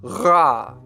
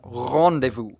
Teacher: French features a uvular trill